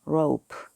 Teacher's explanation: rope 길어져야 돼요. 오우 들리시나요? 오우가 숨어 있는 거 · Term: O의 장모음